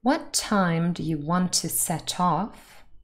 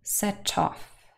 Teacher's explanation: And in fact, if you know a little bit more about sentence stress in English, you know that we have a tendency to stress the last lexical item and the last part of the sentence a little bit more than the first bit. So off will probably have the main stress in the sentence.